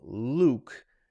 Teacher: But in my name, Luke, there isn't a y there.